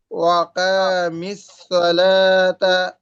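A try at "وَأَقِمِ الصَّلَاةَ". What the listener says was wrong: টান হবে না ভাই, তাড়াতাড়ি, ওয়া আকিমিস সলাতি।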